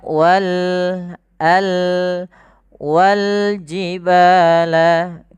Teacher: alif lam yang kita tulis dan kita baca dengan jelas suara lamnya. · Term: alif lam qamariyah